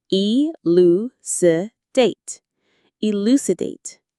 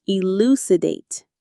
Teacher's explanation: Stress on the lu syllable.